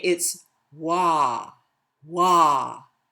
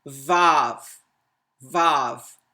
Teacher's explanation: Wah is like wow. Vav is constricting it and strangling it, strangling the vowel between a V and a V.